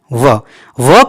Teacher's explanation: जैसे ही बोलते हैं तब दांत और होंठ दोनों का सहारा लेना पड़ता है